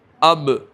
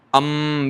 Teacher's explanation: اور با کے اندر اب، دیکھو اب، تو یہ با کے اندر نیچے والا حصہ ملے گا، اندر والا. تو دونوں ہونٹ کی تری مل کر با، خشکی مل کر میم